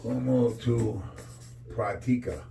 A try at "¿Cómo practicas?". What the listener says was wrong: With the S. S at the end.